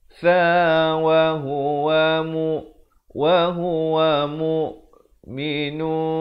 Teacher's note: Di sini ikhfa hakiki. Bunyinya di antara nun dan sa dua harakat.